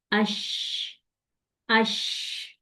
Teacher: تھوڑی سی سپیس کیوں دو اس کو میں یہاں پہ سپیس دوں گی کہ جب اس کو میں سپیس دوں گی تو میری آواز، شین میں آواز میرے پورے منہ میں پھیلے گی، پورے منہ کے اندر پھیل جائے گی · شین کو میں نے نرمی کے ساتھ اوپر اپنے پیلٹ پہ لگانا ہے اور ہلکی سی آواز نکالنی ہے، کیسے، اش، اش، ٹھیک ہے؟